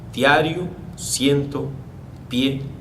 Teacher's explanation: tenemos una vocal abierta seguida o precedida por una vocal cerrada